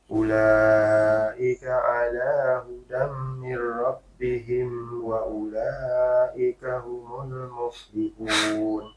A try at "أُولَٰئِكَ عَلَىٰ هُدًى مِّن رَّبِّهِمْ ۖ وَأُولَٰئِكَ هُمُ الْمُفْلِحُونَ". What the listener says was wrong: Kalau dari segi makhrajnya udah bagus, Pak. Tinggal la-nya agak dipanjangin dikit ya. La-nya dua-duanya agak dipanjangin. Mat wajib, betul. Mat wajib.